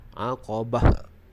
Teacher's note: huruf ta marbutah, bila diwaqafkan, kita waqaf dengan bunyi huruf ha.